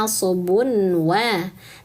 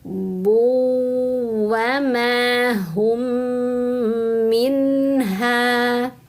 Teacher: Ini tidak boleh bacanya nasabun wa, tapi bun idghamkan ke waw, sehingga bunyinya bu wa ma hum minha.